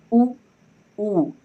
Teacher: तो हम लोगों का जो ओठ है ये वृत्ताकार बन जा रहा है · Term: ओष्ठ